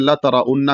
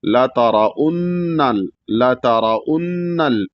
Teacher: ता भी जाहिर हो र भी मोटा हो और नून पे गुना भी हो नून को ला में मिलाया भी जाएगा ल तल जहीम जीम को अदा करना है।